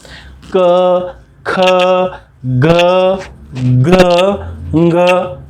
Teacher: ये पहली रो स्पर्श करके निकलती है कंठ को।